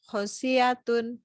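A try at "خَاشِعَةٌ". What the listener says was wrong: Khosyi'atun. Jadi jangan keseret. Jangan sampai shin sama i-nya keseret. Jangan khosyi'atun tapi khosyi'a sendiri-sendiri. Khosyi'atun gitu.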